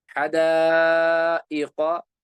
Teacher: ढाई अलिफ तक खींच कर पढ़ेंगे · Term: मद मुत्तसिल